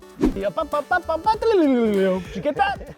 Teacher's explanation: Specifically, the D sound in did is assimilated with the Y sound in you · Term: assimilation